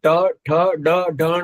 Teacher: ટ ઠ ડ ઢ ણ બોલશો ત્યારે જીભ સેજ માખી વળી અને ઉપર લાગશે. મૂર્ધન્ય કહેવાય એને.